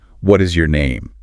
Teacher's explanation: That upward inflection at the end makes it sound like a friendly question, not like you're demanding their ID.